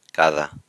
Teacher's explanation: So the D is hard when it begins the word. If it's within the word, as in cada, it gets a softer sound, kind of like the TH in the English word the, cada. All right, E, elefante, or I should say elefante.